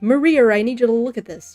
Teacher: if a name ends in an A, there will be an R at the end of it. Like somebody will say like, I don't know, Maria, but they'll say Maria. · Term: random R